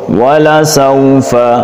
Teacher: الاولی ولسوف، سین پہ سیٹی، واو لین نرمی کے ساتھ، ولسوف دونوں واو پہ ہونٹ گول